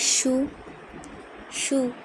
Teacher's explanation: শিন এবং ইয়ার ক্ষেত্রে অর্গানটা ব্যবহৃত হয়, মানে অঙ্গটা ব্যবহৃত হয় জিহবা, কিন্তু উপরের অংশে স্পর্শ করার প্রয়োজন হয় না, কিন্তু উচ্চারিত হয় মাঝখান থেকে।